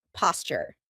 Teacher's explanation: That's because a T and a Y sound together make a CH sound, like in Tuesday and tuna.